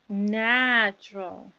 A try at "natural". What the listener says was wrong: Wonderful. You were even a little bit stronger a second ago.